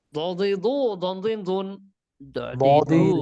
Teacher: জিহ্বার গোড়ার কিনারা উপরের মাড়ির দাঁতের গোড়ার সঙ্গে লাগাইয়া। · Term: ضاد